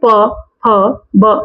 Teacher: हमारे जो हमारे होठ है, लिप्स है, ये आपस में टच कर रहे हैं। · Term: ओष्ठ